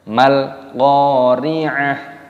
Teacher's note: tapi tidak dibaca panjang karena di sini ada alif lam qamariyah, lamnya sukun, dibaca pendek. · qafnya dibaca panjang, ada tanda alifnya matobi'i, dipanjangkan 2 ketukan